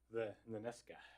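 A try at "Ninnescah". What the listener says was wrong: Ninesca, yeah. put the emphasis on the first syllable. Ninesca.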